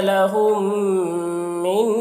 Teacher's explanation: یہاں پر میم ساکن کے بعد میم ہے، تو میم کو میم سے ملا کر پڑھیں گے. میم کو میم سے ملا کر غنہ کے ساتھ پڑھیں گے، اس کو ادغام شفوی کہتے ہیں